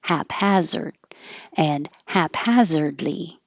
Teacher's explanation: Both hap and has have the same vowel a, which you have to open a lot.